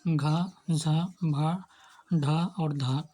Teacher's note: और सघोष महाप्राण में घ झ भ ढ और ध ये सघोष महाप्राण है